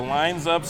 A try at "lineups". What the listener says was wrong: Lineups. Lineups, not lines-ups.